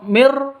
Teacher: nun mati bertemu dengan ro cara bacanya masuk langsung ke ro Mir seperti itu tanpa dengung Mir seperti itu tidak boleh Mir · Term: Idam bilunah